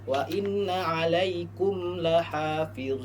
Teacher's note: Maka hukum membaca izhar syafawi adalah huruf mimnya dibaca jelas ya seperti namanya izhar. Izhar itu artinya jelas maka mimnya dibaca jelas.